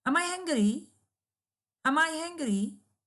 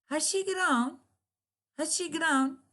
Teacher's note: Both operator and subject usually receive emphatic stress to show the surprise.